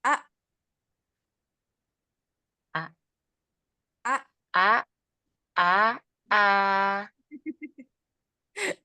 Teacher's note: A tidak memanjang tidak memelar suaranya dia langsung tabrak kah Hamzah yang sukun a iya a coba